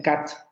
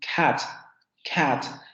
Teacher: Por ejemplo, ellos no dicen time, dicen time, time, time, con esa aspiración.